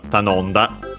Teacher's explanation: But then the mi became the I fell, or simply be the ta no m da, so simply the nasal consonant on its own n, ta non, and that changed the following ta into da, voiced it, because often that happened when happens when an unvoiced consonant is follows the nasal mora.